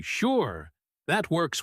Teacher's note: a flat, confident tone, like you really mean it